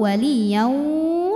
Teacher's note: ke sini baru ditahan karena ini ada hukum idgham bhunah Kenapa karena tanwin menghadapi wau sukun maka tanwinnya masuk ke wau